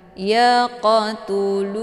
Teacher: Cara bacanya, qafnya dipantulkan dengan pantulan ringan. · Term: qalqalaf sughra